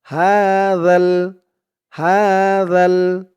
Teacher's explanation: জালের আওয়াজটা কিন্তু একদম নরম পাতলা হবে জিহ্বার মাথা উপরের দাঁতের মাথার সাথে লাগবে